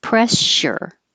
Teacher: The two S's before the URE make it a voiceless sh sound.